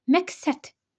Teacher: D burada t-ya keçir, q da burada k-ya keçir.